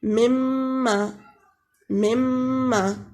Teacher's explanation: میم کے اوپر جب شد آ جائے تو دونوں ہونٹ آپس میں ملیں گے اور آواز ناک کے ذریعے نکلے گی، خشوم کے ذریعے، ناک کی بانس کے ذریعے، جیسے مما، مما، دونوں ہونٹ آپس میں ملیں گے اور آواز خشوم کے ذریعے نکلے گی تو غنہ ہوگا۔